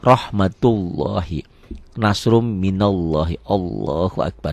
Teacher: dibacanya ada O ya, ada O tebal dan seakan-akan ada wawunya, ada W-nya.